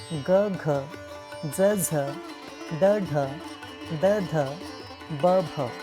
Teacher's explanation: मृदू, स्वर यंत्रात कंपन असते.